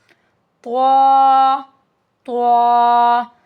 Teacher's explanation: और it's also heavy letter भारी हर्फ है यह भी त् त जुबान की नोक ऊपर के मसूड़ों से लेकिन जोर के साथ · زبان کی نوک اوپر کے مسوڑوں سے لیکن زور کے ساتھ، تب ہمارے پاس طوا ادا ہوتا ہے. Tip of the tongue with gums pronounced with force, it's heavy letter.